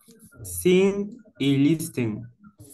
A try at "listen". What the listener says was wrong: Trate de no decir la T. Diga solo listen.